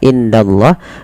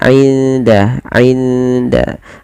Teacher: Di sini kita baca dengan bacaan ikhfa. Cara membacanya menyamarkan suara nunnya kepada huruf dal.